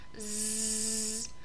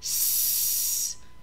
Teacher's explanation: So if I make the sound Z with my voice, I can also make the sound S without my voice.